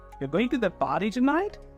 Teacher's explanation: So you'll see that if I am going up at the end of the sentence, it actually indicates that I'm asking a question. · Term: rising intonation